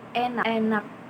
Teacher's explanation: Seperti pada kata besar besar setengah terbuka dan lidah itu tetap netral. Sedangkan dalam taling itu dibentuk dengan lidah yang agak naik ke depan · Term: e taling